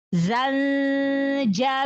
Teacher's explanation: Tambahkan sofir pada huruf zai. Sofir itu suaranya seperti lebah.